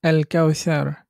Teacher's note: এ পর্যায়ে কাফ থাকার কারণে লামটা উচ্চারিত হচ্ছে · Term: হরফে কামারিয়া